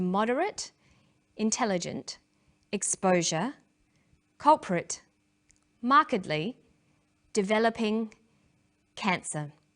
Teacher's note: stress one syllable the vowels in the other syllables are shortened sometimes these short syllables become a schwa an er sound or an e they're short relaxed sounds